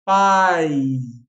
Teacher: Notou que o I ele é mais fraquinho que o A, né? Fazendo que nesse contexto o A seja vogal e o I a mais fraquinha semivogal.